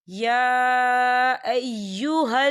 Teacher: या के ऊपर खड़ी हरकत है और इसमें मद भी है तो हम इसे 4 हरकत के बराबर खींचे पढ़ेंगे।